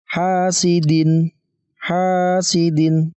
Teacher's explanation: tekan ada hak berharakat fathah lalu bertemu dengan alif teman-teman maka dibaca panjang 2 harokat ataupun dua ketukan